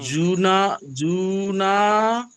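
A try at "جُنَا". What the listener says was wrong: জু টান হয়ে যাচ্ছে, জু টান হবে না, জু না, শুধু নুন টান হবে।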